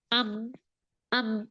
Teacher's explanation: Nanti kalau belajar sifat, nah ini namanya syiddah dan dia tawassut atau bainiyah. Karena nggak semua aliran suara lewat bibir untuk mim. Itu ada lewat hidung. Nah, kita boleh buktikan saat dia lewat hidung, pencet hidung kita. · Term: mim sukun